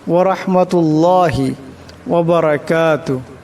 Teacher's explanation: এখানে বড় হা আসছে আওয়াজটা গলা থেকে আনবেন